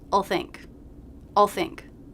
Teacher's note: so i'm not bringing my tongue tip up into the position of the l i'm just making the dark sound